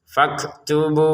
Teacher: Keluarkan sedikit napas, dan juga bunyi ta; Karena kafnya sukun, napasnya lebih terdengar dan terasa, faktubu. Untuk 'bu' di sini, kita membacanya selama enam ketukan karena kita sedang berhenti